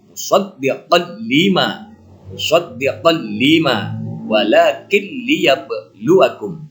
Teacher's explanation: Idghamnya dengan tidak ada dengungan. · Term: idgham bila guna